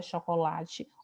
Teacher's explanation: Então, quando você fala a palavra chocolate, o lá é a sílaba mais forte e aquela sílaba que tem a intensidade maior